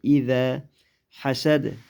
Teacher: zalni tilimizning uchi va ustida tishlar orasidan chiqaramiz